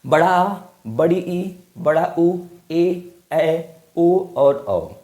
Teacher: ऐसे स्वर जिनके उच्चारण के लिए हर्ष स्वर या फिर लघु स्वर या फिर एक मात्रिक स्वर से दो गुना समय लगता है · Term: दीर्घ स्वर